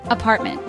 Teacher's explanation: It is a threecllable word. Stress is on the second syllable.